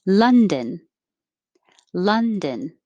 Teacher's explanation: the vowel is uh as in up